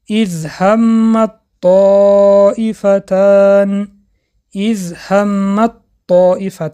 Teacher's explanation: حرف ت به حرف طا ادغام شد